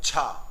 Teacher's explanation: हमने कहा इसमें कौन सा महाप्राण व्यंजन है, तो आपको तुरंत क्या करना है, तुरंत आपको हाथ कहां लगाना है, मुख के सामने लगाना है, और सारे जो ऑप्शन में दिए हुए हैं उनको पढ़ना है, जा, गा, डा और छा। और जैसे ही छा आपने पढ़ा तो छा में हवा निकली है, और किसी में जा बोला तो आपको हवा निकली है लेकिन उतनी हवा नहीं निकली है।